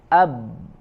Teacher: ya kita misalkan kasih huruf a di depannya ab ya ab maka saling berbenturan ya dua antara dua bibir dua unsur makhrajnya bibir dengan bibir berbenturan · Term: huruf ba